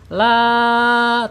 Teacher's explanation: al-jaub tidak boleh masuk ke hidung nih ya